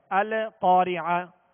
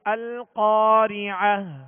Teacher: اس سکون کو جماؤ کے ساتھ پڑھنا ہے، یعنی اس میں قلقلہ نہ ہو. آواز میں حرکت پیدا نہ ہو. القارعہ نہیں پڑھیں گے بلکہ القارعہ.